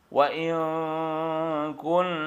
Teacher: ikhfa yang pertama ab'ad, nun mati menghadapi kaf